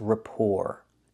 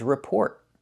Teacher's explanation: in the first word the t is silent and the second word the t is not silent